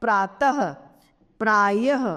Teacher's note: अक्षर के अंत में लगने वाली दो बिंदी जिसका ह के रूप में उच्चारण किया जाता है वह विसर्ग कहलाती है इसके उदाहरण है प्रातः प्राय इत्यादि अब